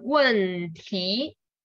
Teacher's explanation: 4 tone and then second tone